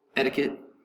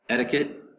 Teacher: Accent is going to be over the first syllable. Etiquette. The T, the first T, etiquette.